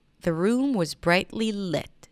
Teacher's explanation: The room was brightly lit, stress on 'lit'.